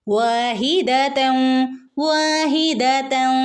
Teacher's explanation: വാവിനെ ഇവിടെ നീട്ടി കൊടുക്കണം ട്ടോ രണ്ടനക്കം വാഹിദം വാഹിദം ഇവിടെ തെൻ എന്ന് ഓതില്ലട്ടോ തൻ വരണമെങ്കിൽ രണ്ടും ഒരുമിച്ച് വരണം